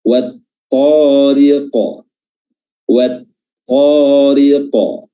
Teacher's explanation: huruf qaf merupakan huruf yang tebal, dan di sini qalqalah